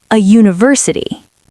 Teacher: Even though U is a vowel, it sounds like university, starting with a Y sound. So we say a university, not an university.